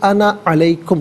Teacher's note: یہاں پر انا کو عام طور پر الف مدہ کو ہم کھینچتے ہیں، لیکن یہاں پر بغیر کھینچے انا علیکم پڑھیں گے